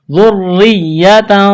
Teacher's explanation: ذال کو نرم کرنا ہے، را کے ساتھ ملانا ہے، تشدید ہے، را کو باریک کرنا ہے